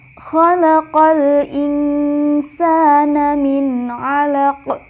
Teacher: qolqolah kubro atau besar artinya bacaannya keras atau jelas pantulannya karena huruf Qalqalah Hai karena dihentikan atau berada di akhir kalimat